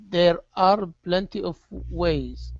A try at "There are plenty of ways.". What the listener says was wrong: Control your tongue on those R's. Push the tongue down so it does not touch the top of your mouth. Okay, so it's there are plenty of ways.